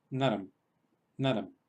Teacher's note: pronunciamos como si simplemente la palabra terminara en M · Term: anuswara